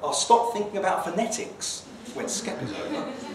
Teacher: skep is now the given information, so it's going to have a rising tone